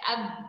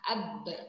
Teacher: Kalau kita ni menyebut huruf ba, bibir atas dan bibir bawah kita ni bertemu. Ab. Itu adalah tempat keluar ataupun cara menyebut huruf ba.